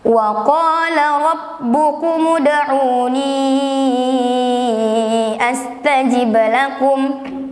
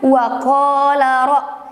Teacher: Di sini terdapat huruf ro, yang dimana huruf ro itu ditandai dengan huruf berbaris fathah atau atas. Maka cara membacanya, ro-nya dibaca tebal,